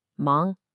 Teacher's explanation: That's a rising second tone.